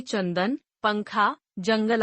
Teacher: अनुस्वार इनका उच्चारण नाक से होता है